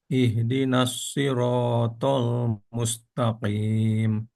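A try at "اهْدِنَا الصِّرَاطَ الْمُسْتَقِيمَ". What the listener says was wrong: Ya, huruf nunnya ditipisin lagi. Ihdina nasiro.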